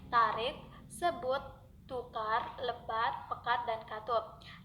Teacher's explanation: Lafal konsonan T. Konsonan T dilafalkan dengan cara mula-mula menempatkan ujung lidah pada gigi atas, lalu udara diletupkan dengan tiba-tiba sehingga ujung lidah terlepas dari gigi atas itu. Ucapannya baik pada posisi awal kata maupun pada akhir suku kata adalah sama saja.